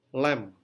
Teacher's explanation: saat kita mengucapkan kata lem bibir kita langsung terkatup rapat